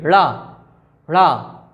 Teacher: जीभ ऊपर जाएगी और इकट्ठी नीचे गिरेगी, ड़ा ड़ा, इसलिए इन्हें उत्क्षिप्त कहा जाता है।